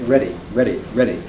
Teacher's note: the American speeding up or flapping of D operates in Word like ready